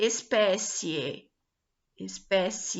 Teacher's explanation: começa a fraca e ela aumenta porque começa a fraca porque começa com a semivogal e depois ela se intensifica com a vogal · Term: ditongo crescente